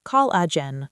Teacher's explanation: This word is pronounced collagen, with the stress on the first syllable, col.